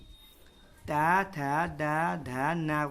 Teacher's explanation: हमारी जीभ दांत के ऊपरी भाग को छूती है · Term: दंतीय